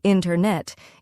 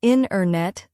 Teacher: The t sound gets softer or disappears. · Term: dropped sounds